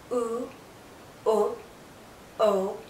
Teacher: you can't can't see my tongue because the highest point is the back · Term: back vow sounds